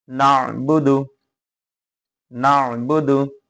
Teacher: আইনটা গলার ভিতরে যাবে